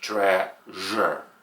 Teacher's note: it sounds like Z with lots of air